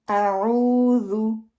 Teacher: ऊ को लंबा करेंगे क्योंकि पेश आ रही है आइन के ऊपर और वाव जो है खाली है, और जब भी पेश के बाद वाव आएगी वो 2 काउंट मद बन जाएगी।